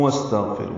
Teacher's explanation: واو کو سین سے ملا دیں گے، سین ساکن پہ ہمس ہوگا